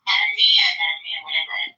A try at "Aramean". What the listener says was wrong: No, yeah, Aramean. Aramean. It's not called Armenian. It's Aramean.